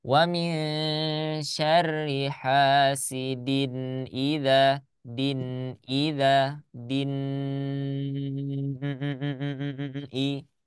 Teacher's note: nun sama hamzahnya jangan sampai ada jeda. Wa min syarri hasidin idza.